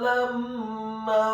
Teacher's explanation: huruf lamnya ditasydidkan fathah 1 harokat